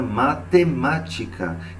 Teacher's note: e depois nós somos para as proparoxítonas quem são as proparoxítonas são aquelas palavras que a antepenúltima sílaba é a tônica é a mais forte